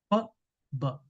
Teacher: When you produce per sound, air is coming out and stopped because of both the lips touch. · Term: bilevel plosive